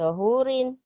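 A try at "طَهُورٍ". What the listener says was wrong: Hunya panjang. Awas hati-hati nih.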